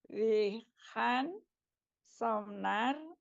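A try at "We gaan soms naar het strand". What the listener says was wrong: Soms S-nya dibunyikan ya. Soms-nya dibunyikan.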